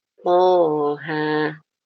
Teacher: Tapi dibacanya dua harakat, yaitu th dipanjangkan dua harakat aja.